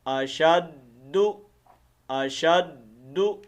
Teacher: دال کے اوپر پیش ہے، تو اس پیش کو ہم نے لمبا نہیں کرنا، اشدو نہیں پڑھنا